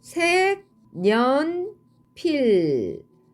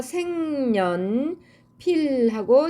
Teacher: 없던 소리 니은이 첨가됐습니다 그런 다음에 자 첨가된이 니은으로 인해서 앞에 있는 기억이 다시 비음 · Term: 니은 첨가